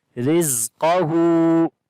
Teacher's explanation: Ra we read in light sound due to kasra under it.